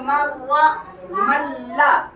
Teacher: बगैर गुन्ना के मतलब नून की आवाज नाक में नहीं जाएगी, डायरेक्ट इदगाम करेंगे